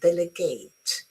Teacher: the verb to assign, and with a clear long A sound